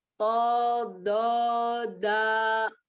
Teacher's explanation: Do-nya do bukan zo, ujung lidahnya tidak keluar.